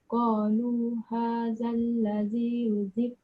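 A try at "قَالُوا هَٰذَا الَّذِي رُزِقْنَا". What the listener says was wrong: Dah betul dah. Cuma lantunan dia jangan lambat.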